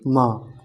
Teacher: मा अनुनासिक वर्ण होता है